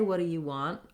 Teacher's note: the do you and two are all fast connecting words that have vowel reductions